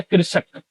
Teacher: मूर्धा से बोला जाता है, मूर्धा में जीभ टच करता है, इसीलिए मूर्धन्य स कहा जाता है।